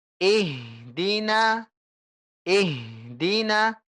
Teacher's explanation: Jangan kasih jarak antara ih dengan di.